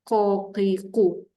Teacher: Huruf qaf, lidah dalam tu betul-betul melekat. Itu jadi berat dekat dalam.